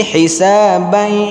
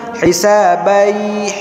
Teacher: Yang pertama idgham, masukkan huruf di belakang ke huruf yang depan. Yang kedua ada gunnahnya, berarti masuk ke hidung. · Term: idgham bi gunnah